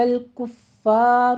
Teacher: فا کے اوپر تشدید ہے، سختی کیجیے، آگے را مفخم پڑھنی ہے